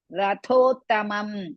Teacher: ಪೃಸ್ವ ಇರ್ರಸ್ವತ್ ಸ್ಥ is half ವ ದೀರ್ಘ ಸ್ಥಾಪ ಇತ್ವ ರಥೋತ್ತಮಂ ರಥೋ ರ ಇಸ್ ಹ್ರಸ್ವ ಥೋ ದೀರ್ಘ ಮಹಾಪ್ರಾಣ